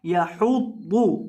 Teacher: पौध मुशद्दद है, इसको सख्ती के साथ अदा करेंगे और पौध को मोटा करके पढ़ेंगे। जो पौध है ये मोटे हरूफ में से है, इसलिए इसको मोटा करना है।